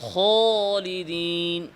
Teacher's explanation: আলিফের আওয়াজের সাথে কিছুটা ওয়াওয়ের আওয়াজের মিশ্রণ ঘটানো, যেমন খালিদিনকে খলিদিন আছে না, এটাও আছে, এটাও বেশি ইস্তারি যারা করে পড়ারে।